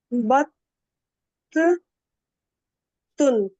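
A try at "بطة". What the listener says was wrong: اگر آپ اس کو آخر میں سائلنٹ نہیں کر رہی ہیں تو بطن لکھا ہوا ہے، اور اگر سائلنٹ کریں بطہ. بطہ مانے بطخ ہوتا ہے.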